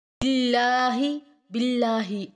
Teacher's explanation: اللہ کے لام کو باریک آواز میں ادا کریں گے کیونکہ اللہ کے لام سے پہلے حرف کے نیچے زیر ہے۔